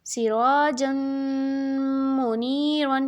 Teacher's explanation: یہاں پہ میم پہ بھی غنہ ہوگا کیونکہ میم مشدد ہے